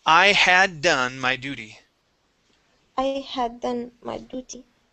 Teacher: that T will be pronounced like a D sound.